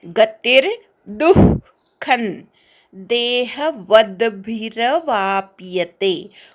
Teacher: गतिर्दुःखं, तीवर आघात घ्यायचा. दूच्या विसर्गाचा अर्धा उच्चार ऐकू आला पाहिजे, अनुस्वाराचा अर्धा न.